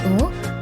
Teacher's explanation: tinggi belakang bulat